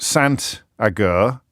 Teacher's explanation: The T is pronounced because it's followed by a vowel.